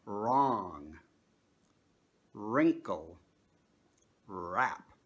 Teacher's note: if a W at the beginning of a word is followed by a consonant, the W is silent.